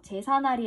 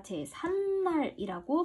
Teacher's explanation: 자, 이렇게 한자어와 우리말이 합성이 되었을 때 이때 니은이 덧나죠. 제사날이 아니라 제삿날이라고 발음하기 때문에